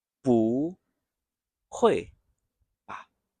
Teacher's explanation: 不，这里是读第2声，吧也是轻声